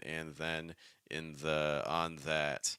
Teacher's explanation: you can clearly hear the vibration on my th